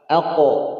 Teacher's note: Tapi dia punya sifat qalqalah. Alqo, a-nya tipis, o-nya tebal. Alqo, ya. O, pi, u, mau fathah, kasroh, dhammah, tetap dia tebal.